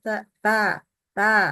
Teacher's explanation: Bagian depan lidah diletakkan atau mengenai permukaan dalam gigi seri bagian atas.